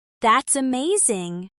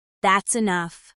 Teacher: Even in casual speech, you can hear a rise in pitch for excitement or surprise and a fall in pitch for seriousness or finality